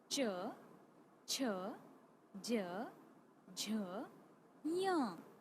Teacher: स्पर्श संघर्षी, तालव्य तालु